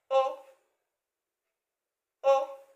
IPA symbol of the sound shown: ʊ